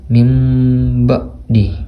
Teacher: bacanya kayak nun sukunnya itu kayak diubah jadi mim sukun gitu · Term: iklab